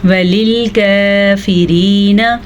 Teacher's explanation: را کو بھی باریک پڑھنا ہے کیونکہ را کے نیچے زیر ہے۔ را جو ہے وہ پیش کی صورت میں پر پڑی جاتی ہے اور زبر کی صورت میں پر پڑی جاتی ہے، جبکہ زیر آنے کی صورت میں را باریک پڑی جاتی ہے، ٹھیک ہے۔